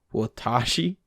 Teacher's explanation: when foreigners incorrectly stress the middle syllable of watashi the first syllable is usually warped as a result and the final word sounds like watashi but whoa